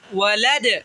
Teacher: وقف کی صورت میں دال کو ساکن کریں گے جب تو اسے قلقلہ کریں گے